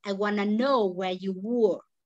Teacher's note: We stress here in know and were.